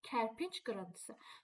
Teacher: C-dan sonra samit gəlib deyə Ç kimi tələffüz olunacaq.